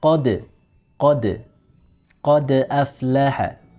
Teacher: Qad, ko, dia tebal. Ketika dal disukun, tidak boleh ikut tebal menjadi qad, tapi dia harus tipis. Qad, qad aflaha.